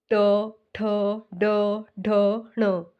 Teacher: वो मुंह के ऊपर वाले हिस्से को स्पर्श कर रही है तो इसका उच्चारण स्थान कहां से हो रहा है मुर्धा से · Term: ट वर्ग